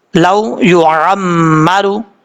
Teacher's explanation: میم کے اوپر شد غنہ کریں گے، ایک الف کی مقدار، عین کے اوپر زبر ہے، عمرو، اس طریقے سے پڑھنا ہے۔